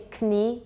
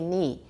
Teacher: So Proto-Germanic, we had a kn sound that was actually pronounced. The k got dropped later in English, but the Germans kept it. So they say knie, we say ni.